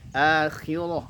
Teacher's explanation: rohnya tebal, taknya tipis.